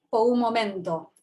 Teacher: está articulando una una velar aproximante Sonora · lo que vemos es el comportamiento de un aproximante